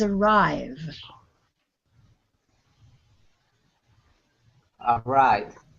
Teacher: Because it's voiced, we have to use the D sound because D is also voiced. · When you say that consonant v, you'll feel it in your throat and in your mouth. There's a vibration. We call this voiced. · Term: voiced consonant